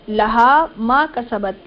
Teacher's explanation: لہا ما کسبت، لا زبر کے ساتھ، حال زبر ہا، میم الف زبر ما، دونوں کو کھینچ کر پڑھیں گے. کسبت یہاں پر زبر کے ساتھ ہے یہ حروف، ان کو بغیر کھینچے پڑھیں گے.